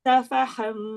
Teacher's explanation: Ha pangkal halkum. Ha macam kita melepaskan nafas.